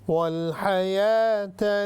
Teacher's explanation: تا راؤنڈ تا ہے یعنی گول تا، تو یہ ہا بن جائے گی